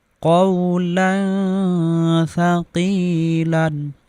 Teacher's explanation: তানমিনের পরে ইফার হরফ সা আসার কারণে এখানে আমরা গুন্না সহ গোপন করে পড়েছি